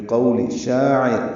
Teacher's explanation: بقول، با کو جلدی اور معروف پڑھیں گے. قو وولین ہے، ہونٹوں کو نا تمام گول کریں گے، آگے لائیں گے. بقول شاعر، شا الف مدہ ہے، دو حرکات لمبا کریں گے.